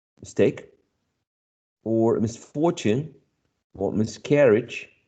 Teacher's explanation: In this case, the stress falls on the second syllable, or if you want to look at this from a different perspective, on the first syllable of the root